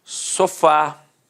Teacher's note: Repare que a sílaba tônica é a última e é terminada de fato em A.